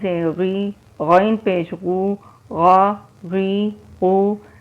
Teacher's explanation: غین موٹے حروف میں سے ہے، اس کو بھی موٹا پڑھیں گے، پر کر کے پڑھیں گے۔